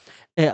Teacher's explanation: यानी कंठ से पहली ध्वनि निकलती है हमारी क्या? अ आ की। तो इन्हें बोलते हैं क्या? कंठ स्वर।